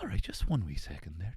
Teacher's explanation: She has this real breathy northern Irish voice